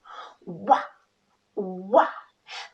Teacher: To say the sound W, let's place our lips together like we're blowing out a kiss. Pucker your lips and make a long OO, followed by a long ah.